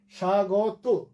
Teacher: শয়ের নিচে ব ফলা আছে, উচ্চারণ হলো না, শুধু শয়ে একটু জোর পড়লো, এই জন্য তালব্য হয়ে এসছে স্বাগত।